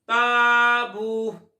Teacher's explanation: تا باریک پڑھا جاتا ہے تو الف بھی باریک پڑھیں گے۔